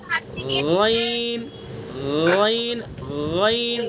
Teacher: غین کا مخرج جو خا کا مخرج پڑھایا آپ نے ادنائے حلق یعنی منہ کی طرف والا حصہ